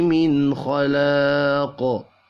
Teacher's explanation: نون ساکن کے بعد خا ہے، اظہار حلقی ہوگا، غنہ نہیں ہوگا۔